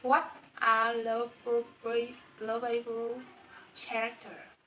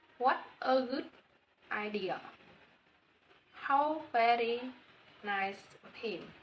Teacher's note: the tone rises at the beginning and gradually falls at the end